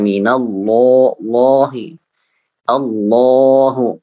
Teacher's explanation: Ini agak terangkat dan memang pangkal lisan itu hampir menutupi tenggorokan. Makanya kita seperti agak tercekik mengucapkannya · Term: alif mufakhamah